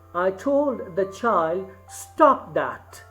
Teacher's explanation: now the stress is on both the syllables, stop also and that also. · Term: spondy